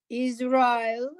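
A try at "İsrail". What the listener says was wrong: No, is. No, no, not is. Not is. Israel.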